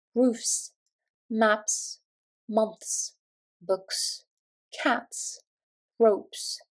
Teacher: if a noun ends in a voiceless, soft sound—like /f/, /k/, /p/, /t/, or the 'th' sound /θ/—we pronounce the plural ending as a crisp /s/